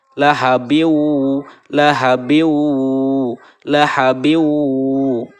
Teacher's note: cara membacanya itu dimasukkan serta mendengung ditahan dengannya selama dua hareukat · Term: idgham maal ghunnah, idgham ma'al gunah